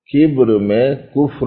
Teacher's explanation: بیچ کا ایک حرف ذرا سا فرق والا ہے، ایک با ہے ایک فا ہے، مگر ان دونوں میں بھی اشتراک ہے، اور وہ اشتراک شفوی ہونے کا ہے